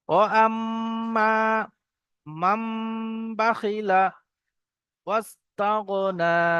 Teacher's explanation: নুন সাকিনের পরে বা এসছে একলাবের কায়দা, যে নুন সাকিনকে মিমের দ্বারাই পরিবর্তন করে পড়তে হবে